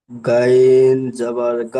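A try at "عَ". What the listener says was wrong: এটা গয়েন নয়, গয়েন কখন হয়?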